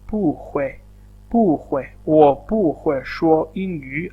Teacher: this is a tone sandhi of pu. So this pu is basically turning into a second tone along with this tone